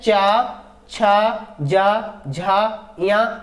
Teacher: तालव्य व्यंजन में क्या आ जाते हैं? चा वर्ग पूरा आ जाता है।